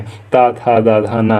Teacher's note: ये सभी के सभी दंती वर्ण के अंतर्गत आते हैं।